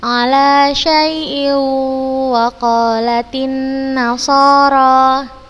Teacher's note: Kita masukkan ke huruf waw, kemudian kita berikan gunnah yang dipanjangkan. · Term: idgham bi gunnah